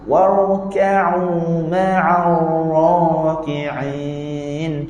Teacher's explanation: Warka'u, ra tebal, kaf nipis cantik.